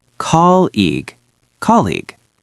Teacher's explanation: we put the heavy stress on the first part